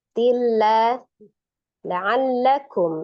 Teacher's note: Nun sukun atau tanwin bertemu dengan huruf lam hukumnya adalah idgham bila gunnah. Idgham ditasdidkan tetapi tidak disertai dengan dengun.